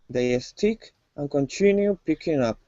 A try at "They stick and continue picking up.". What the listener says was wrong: Okay, so instead of saying a stick, they stick. Focus on the S. They stick and continue picking up.